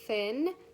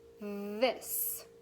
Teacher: So if we say the word thin, it is unvoiced and it's quiet. If we say the word this, our voice is turned on and it is voiced.